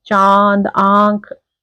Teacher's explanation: आप देखोगे नाक से भी आवाज आ रही है और मुंह से दोनों से आ रही है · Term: अनुनासिक